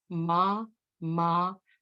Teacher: 20 years and finally we arrive at the letter a but short and frail and open back vowel your lips do not curve round